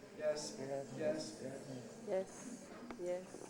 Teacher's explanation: doesn't go up, doesn't go down, stays on the same pitch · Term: mid-level tone